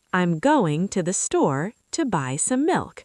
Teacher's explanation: Clap on going, store, buy, milk.